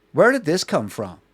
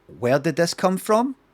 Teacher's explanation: you get this kind of rising intonation, this rising inflection thing with a question, and it feels like two questions.